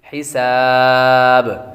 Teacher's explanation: یقوم الحساب، حا باریک پڑھیں گے، سین حروف صفیرہ میں سے ہے یعنی سیٹی والے حروف میں سے، تو آواز آئے گی سیٹی کی. حساب، اور آخر میں مد ہوگی، مد عارض.